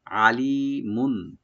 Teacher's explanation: আইনটাকে vertical করে যেন গলা মাঝখান থেকে আসে